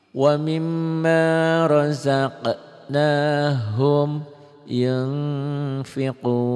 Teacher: Nun matinya enggak pakai sukun ketemu fa bunyi n-nya berubah tuh. Nun mati ketemu fa ini ikhfa. Bunyi n-nya berubah jadi eng gitu. Bunyian tambah g.